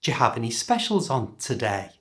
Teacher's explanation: listen to how the pitch goes up the end · To say this naturally, change the do and you to the j sound, so it's, do you have any specials on today? And because it's a yes or no question, that is, it can be answered yes or no, listen to how the pitch goes up at the end